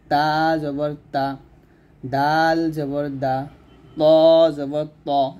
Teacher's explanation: তারপরে তা দাল ত এই তিনটা হরফ আমরা কি করব, জিহ্বাটা উপরে দুই দাঁতের গোড়ার সঙ্গে লাগবে। জিহ্বার আগা সামনের উপরে দুই দাঁতের গোড়ার সঙ্গে লাগিয়ে আমরা তা দাল ত উচ্চারণ করব। যেমন এটা হবে তা জবর তা, দাল জবর দা, ত জবর ত এরকম, ত জবর ত।